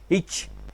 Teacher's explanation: கடை எண்ணத்துல சத்தம் வரும் நாங்க இதை பார்த்தோம் எங்கெங்க பிறக்குது என்று பார்த்தோம் இச் என்று சொல்றப்ப இடைநாவும் இடையன்னமும் பொருந்த பிறக்கும்